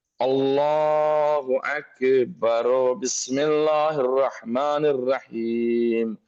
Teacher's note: اب اگر کوئی شخص یہ چاہے کہ اللہ اکبر کو جملے کے ساتھ جو بعد میں پڑھنا ہو، مثلا بسم اللہ الرحمن الرحیم سے ملائے، تو بہتر یہ ہے کہ اکبر کے آخری حرف رے کو پر پیش دے، مثلا اللہ اکبر بسم اللہ الرحمن الرحیم۔ اگر ملا کے پڑھ رہا ہے تو رے پہ ہمیں پیش پڑھنا پڑے گا